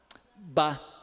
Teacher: o impedimento à passagem do ar acontece ali, entre os lábios, bilabial. Ba, o B, né?